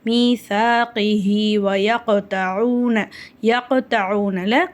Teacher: சுக்கூன் பெற்ற காஃப் கல்கலாவுடைய எழுத்து, அதனால நம்ம அதை அசைச்சு ஓதணும்.